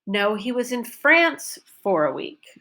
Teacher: now France is my focus word because he wasn't in Spain he was in France